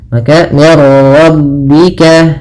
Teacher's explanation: Idgham itu memasukkan, maka masukkan nun ke ra sehingga suara nunnya hilang. Yang di sini idghamnya idgham kamil.